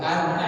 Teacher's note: Cara membacanya mim sukunnya dibaca dengan jelas. Tidak boleh berdeng sa samar. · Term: izhar syafawi